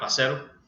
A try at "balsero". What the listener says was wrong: Balsero, there's an L in that. Problems with the L. Balsero. No, bitch, it's Balsero. Balsero.